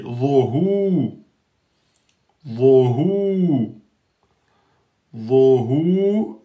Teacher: vo emphatique, hu aminci